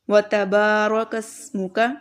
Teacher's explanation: با جو ہے یہاں پر اس کو لمبا کریں گے کیونکہ الف مدہ ہے